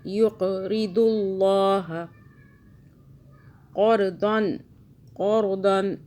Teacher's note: قاف پہ قلقلہ جھٹکا دیا